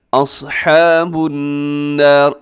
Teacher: اصحاب النار، الصاد موٹا ہے